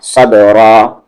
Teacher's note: صا کو با میں صب را کے ساتھ الف را صبرا. صاد ہیوی لیٹر ہے با پہ قلقلہ ہو رہا ہے